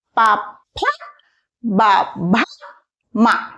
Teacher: ఈ అక్షరాలు పలికేటప్పుడు రెండు పెదాలు టచ్ అవుతాయి అన్నమాట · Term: ఓస్ట్